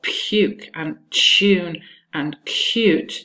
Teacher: you have an allophone of the y, which is devoiced